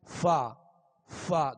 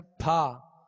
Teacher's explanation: دونوں ہونٹوں کو گول کر کے فا ادا کرتے ہیں جو واو جیسی مشابہت ہوتی ہے، یا پھر دونوں ہونٹوں کو بند کر کے ادا کرتے ہیں جیسے پھا، تو یہ حرف ہی بگڑ گیا۔